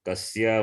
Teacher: Kasya only, not kasyaha. Don't add visarga.